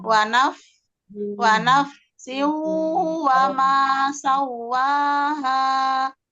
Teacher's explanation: Jangan jangan mantul Bun, huruf fa-nya keluar anginnya. Diameskan. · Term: dihameskan di fa-nya